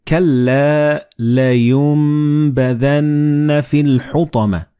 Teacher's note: Like in this example, you read كَلَّا لَيُنْبَذَنَّ فِي الْحُطَمَةِ. So the noon and ba, they will be assimilated together and you will pronounce them as meme.